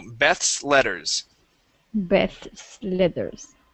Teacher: we have the uh the th leading into the S and then an L